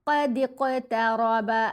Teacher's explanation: قاف پر کلکلا کرنا ہے، موٹا بھی پڑھنا ہے